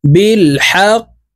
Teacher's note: উপরের দিকে ধাবিত করে ধাক্কা দিয়ে উচ্চারণ করতে হবে কারণ কফ কলকলার হরফ